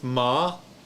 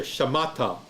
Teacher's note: Second syllable, ma, which has the emphasis